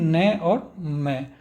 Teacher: तो सघोष नासिक्य होते हैं आपके न और म